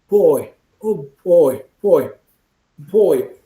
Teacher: sudden release of air when you say boy it begins again it starts with that closed position closed position and you release suddenly